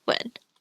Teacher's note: UN is pronounced a little bit like the EN, but with a W sound at the start, so like 文.